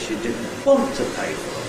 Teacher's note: I've only got one accented syllable this time, and that is the syllable “want” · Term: Nucleus, nucleus